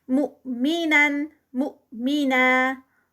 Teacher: यहाँ पर हमज़ा है, हमज़ा के ऊपर जज़म है तो ये जर्क लगेगा और ना 2 काउंट्स पे एंड पे उसको जब रोकेंगे.